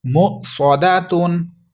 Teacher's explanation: صاد حروف صفیریہ ہے جو کہ سیٹی کے ساتھ پڑھا جائے گا، اور مستعلیہ ہے جو کہ پر پڑھا جائے گا